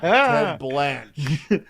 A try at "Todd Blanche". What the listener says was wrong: Yeah, Todd Blanche. Yeah, you just said Ted.